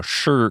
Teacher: Okay, no, that's real bad, but this is 我 是, that people saying, 是, throwing that R on the end of sh. Why is that a pet peeve?